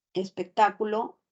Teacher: el acento siempre tiene que recaer sobre la sílaba ta